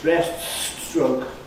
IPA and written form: ˋbreststrəʊk (breaststroke)